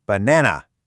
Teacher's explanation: That little bit of extra energy on that middle syllable? That's the stress.